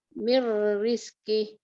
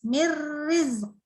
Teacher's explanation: Oke, nun ketemu ro. Nun ketemu ro kan langsung ya idgham. Jadi langsung mir.